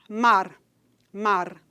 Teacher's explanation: a gente pode escutar esse R de uma maneira mais fortemente marcada quando a pessoa produz esse R final como um TEP